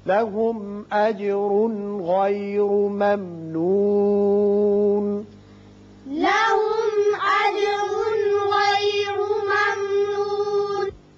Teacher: यहां तनवीन के बाद गाइन है, यहां इजहार हल्की होगा